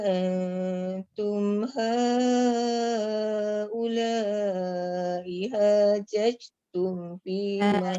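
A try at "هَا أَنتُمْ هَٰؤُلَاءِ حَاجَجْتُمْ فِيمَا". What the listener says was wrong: Jajatum, jangan judge. Jangan bunyi angin. Tak ada qalqalah tu. Hajajatum. Je.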